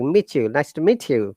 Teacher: The T is some similar to cha sound.